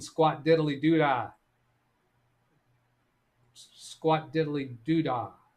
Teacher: I didn't pronounce the D on that last syllable.